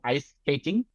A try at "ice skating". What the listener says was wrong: এই যে কে এর উচ্চারণ একটু ইয়া হচ্ছে, জোরে হবে, ঠিক আছে।